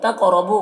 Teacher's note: कौफ को पुर पढ़ेंगे और कौफ में कलकला करेंगे